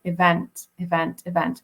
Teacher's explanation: he should be probably stressing the second syllable there